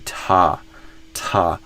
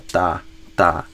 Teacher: There's a lot more air that comes out in the sort of American version of that T than the Brazilian version of that T.